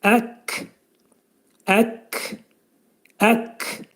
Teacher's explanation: kəf hərfinin məxrəci dilin sonu və demək dilçəyin axırındadır. Və bu şəkildə deyəcəyik ək ək ək şəklində.